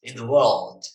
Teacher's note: ada L-nya dibaca di sini ya, L-nya agak tebel gitu, dark L ya